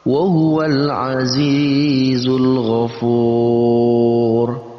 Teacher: maka sudah pasti dia masuk dalam kategori mad tabi'i, dibaca dengan panjang 2 harakat.